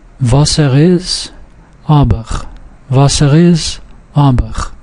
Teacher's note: If a vowel is at the beginning of the word, it's not preceded by a glottal stop, so you don't make a pause before the vowel.